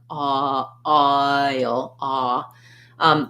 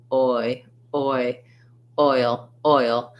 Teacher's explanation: This is just how we write that glide of oi, oi, that it starts in the tongue starts in the position for the ah and lifts to the position for the I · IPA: /ɔɪ/